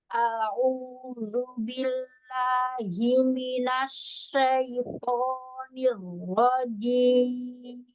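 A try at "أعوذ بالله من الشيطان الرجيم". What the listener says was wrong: Lalu huruf shinnya kayak huruf sin ya, Ukti? Sya, coba. Himinasya, coba. Nah, jangan himinas kayak ini baru sebelahnya. Makhrajnya di mana coba? Huruf shin. Iya, itu ada 3 kan hurufnya. Kalau jim, dia nempel banget. Kalau ya, dia jauh, nggak nempel.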